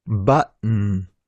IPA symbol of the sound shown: ʔ